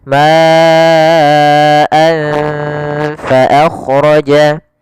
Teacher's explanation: huruf Fa maka cara membacanya samarkan tanwinnya kepada huruf Fa anfa makhraj daripada Fa adalah gigi atas menempel dengan bibir bawah